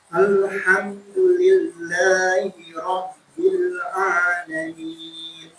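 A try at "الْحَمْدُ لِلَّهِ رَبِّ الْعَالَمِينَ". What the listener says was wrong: Nunnya mana? Alamin. Sedikit. Alamin. Iya, ujungnya.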